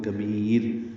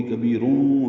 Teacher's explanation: کیونکہ را ساکن سے پہلے یا ساکن آ گئی ہے تو را باریک ہوگی